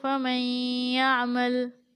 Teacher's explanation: تو اس نون کو یا کے ساتھ غنہ کے ساتھ ملا کر پڑھیں گے